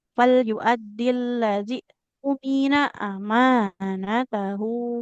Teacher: Nunnya nggak boleh panjang. Nggak boleh panjang nunnya karena di sini fathah tidak bertemu alif.